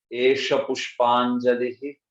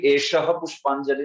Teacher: ऐसा, इसलिए आपने सुना होगा हम कभी भी एषः पुष्पांजलि नहीं बोलते, एष पुष्पांजलि ही ऐसे बोलते। हालांकि वो है एषः, लेकिन विसर्ग का लोप हो गया ना, तो इसलिए एष पुष्पांजलि ही ऐसे बोला जाता है